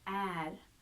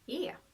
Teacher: if you are on the east coast, particularly around Stockholm, you will find that this is not so much är but more e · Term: regional dialects